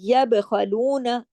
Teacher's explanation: پھر دیکھیے یب خلون، یب، با پہ کلکلا ہوگا، کیونکہ با جو ہے وہ جزم کے ساتھ ہے. یب خلون، خا موٹا پڑا جائے گا خراش کے ساتھ، با پہ کلکلا ہوگا.